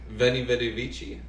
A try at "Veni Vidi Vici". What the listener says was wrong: Yes, but in Latin, in classical Latin, the V is pronounced like a W.